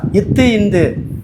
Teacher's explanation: இத்து இந்து நாவின் நுனி மேல் பல்லின் அடியை தொடுவது